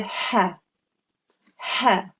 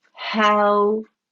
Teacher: And when you see this example in the Holy Quran, a wow sakin straight after a fatha, then you need to understand that it's a waw lean, and the waw lean will cause the easing of the maftu letter into the waw, and it takes two counts, and the sound that it will make will be ow, ow.